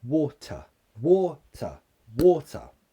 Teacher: the stress is on the first syllable water so the second syllable is what we call a weak form that means it becomes a schwa